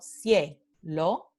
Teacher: la semivocal viene en primera posición y la vocal completa viene en segunda posición. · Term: diptongo creciente